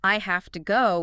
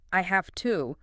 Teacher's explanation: You say the word louder, yes, but also at a slightly higher pitch. And you make the main vowel sound a tiny bit longer. Louder, higher, longer. · Louder, higher pitch on to, slightly longer a sound. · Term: stress